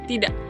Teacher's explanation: Di akhir kata ada bunyi k sering terdengar seperti tertahan.